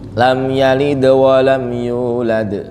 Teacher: Kalau di akhir kita baca itu ada qalqalah, maka itu qalqalah kubro.